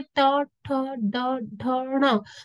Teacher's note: तो जितने भी वर्ण मैंने अभी बोले, इनको बोलते हुए, इसका उच्चारण करते हुए मेरी जो जीभ है वो मूर्धन्य पार्ट को टच करती है, इसलिए ये सारे मूर्धन्य व्यंजन है।